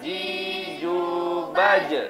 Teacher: Tengah lidah bertemu dengan, menempel dengan langit-langit. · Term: huruf jim